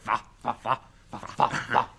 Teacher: F poggiando con i denti superiori sul labbro inferiore.